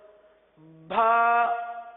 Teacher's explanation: مثال کے طور پر بھا یعنی با کے ساتھ ہا کی آواز نکالی جاتی ہے